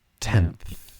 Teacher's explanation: So the sound is produced by allowing air to flow out between the tongue and the upper front teeth. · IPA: /tenθ/